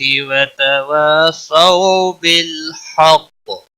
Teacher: وقف کی صورت میں کاف پر قلقلہ ہوگا